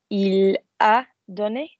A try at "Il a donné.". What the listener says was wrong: But don't stress the auxiliary.